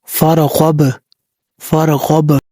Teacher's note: با ساکن ہے حروف قلقلہ میں سے تو یہاں پہ قلقلہ بھی ہوگا